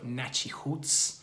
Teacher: And that is, number one, there is a band in Brazil and they're called Nachihoots, spelled N-A-T-I-R-U-T-S. The R sound in Portuguese sounds like an H in English, so Nachihoots.